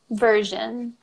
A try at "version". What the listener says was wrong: And we'd say version, so we wouldn't pronounce the R. Version.